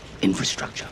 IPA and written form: ˈɪn.frəˌstrʌk.tʃər (Infrastructure)